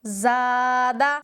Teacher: यह अलिफ मुंह के खाली हिस्से से ही अदा हो रहा है